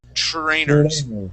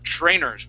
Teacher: remember when we have that we have TR sounds we're almost pronouncing a CH